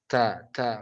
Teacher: Ta itu memiliki sifat namanya hamas. Hamas itu mengalirnya udara